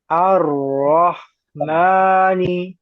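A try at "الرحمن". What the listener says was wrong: Ya, kalau sudah roh, langsung aja haknya dialirkan. Roh, jangan nanggung. Roh, nah, ranya jangan ke bawah panjang. Roh, roh, nah, haknya dialirkan.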